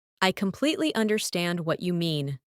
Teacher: Emphasize completely and understand.